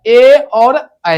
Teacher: जिस वर्ण का उच्चारण कंठ और तालु से होगा उसे हम क्या कहेंगे? कंठ तालव्य